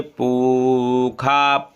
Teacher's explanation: वेद में ये मूर्धन्य सा जो आया है पूखा, पू के बाद ये हमेशा खा बोला जाता है।